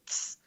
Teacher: the tongue touches the teeth and then the air passes through it